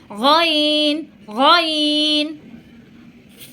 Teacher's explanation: গলার ঠিক শেষ অংশ থেকে এই গইনটা উচ্চারণ হবে